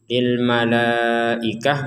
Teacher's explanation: tak marbutah ini Kita mengucapkannya dengan huruf ha jadi bukan huruf lagi kecuali kita menggabungkannya mari kita prak akan